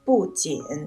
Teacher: 不字在一二三声音节前读四声，所以在紧的前面读四声